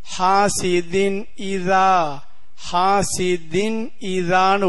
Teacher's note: இங் சத்தம் கொடுக்காமல் நூன் சத்தத்தை தெளிவாக கொடுக்க வேண்டும் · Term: இல்ஹாருடைய சட்டம்